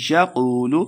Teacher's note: یقول قاف کو مڈا پڑھیں گے دوسرا قاف واو پیش کو واو مدہ دو حرکات لمبا کر کے پڑھیں گے